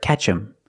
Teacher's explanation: them is not a stressed word so the th is silent